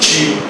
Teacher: tia e dia é o que a gente chama de palatalização